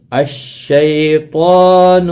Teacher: تا کے اوپر کھڑی زبر ہے، ایک الف کی مقدار کے برابر کھینچنا ہوگا۔ تا مستعلیہ بھی ہے، پر پڑا جائے گا۔